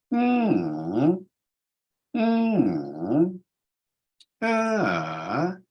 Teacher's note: the intonation pattern that is called in the phonetics textbooks a falling rising tone. Falling rising.